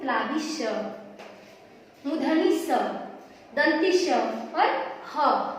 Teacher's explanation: जब हम उच्चारण करते हैं तो हमारे मुख से वायु रगड़ खाकर बाहर निकलती है। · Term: उष्म व्यंजन